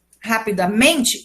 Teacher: A antepenúltima sílaba é mais forte. Quando eu acrescento mente, rapidamente, ela se torna uma palavra paroxítona.